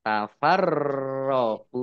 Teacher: Ro tasdid dibaca double roknya